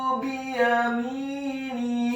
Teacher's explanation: Kemudian huruf nunnya dibaca tipis kasrah satu harokat dan huruf ha-nya dibaca tafkhim tebal kasrah dua harokat karena harokatnya tegak